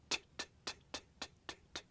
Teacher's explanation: and then explode okay now let's try the T sound now note that you're putting the tip of your tongue on your hard palate stopping the air there and then exploding